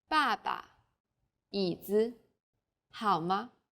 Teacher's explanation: there's a neutral tone. This is very light, weak, and short.